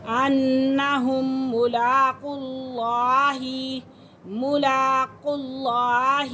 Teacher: اب قاف کو لفظ اللہ کی لام کے ساتھ ملا کر پڑھیں گے اور اس لام کے پر بھی کھڑا زبر ہے۔